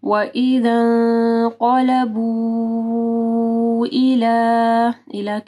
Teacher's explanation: ٹھیک ہے, یہاں پہ دیکھیں مد آ رہی ہے اور اس کے بعد حمزہ ہے, تو اس کو جو ہے ہم لوگ 4 سے 5 حرکات کے برابر لمبا کریں گے